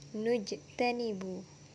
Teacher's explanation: Adapun tanda garis warna oranye, tajwidnya adalah qalqalah sughra, dibaca cukup memantul karena terdapat salah satu huruf qalqalah yakni jim yang berharakat sukun bukan karena wakaf, terdapat pada kata nujtanibu.